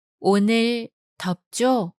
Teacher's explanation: Note the rising intonation indicates the speaker is requesting or soliciting information of something known to the speaker and listener.